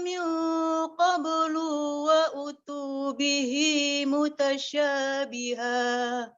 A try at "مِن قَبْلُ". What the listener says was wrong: Ulang qablu lu-nya pendek.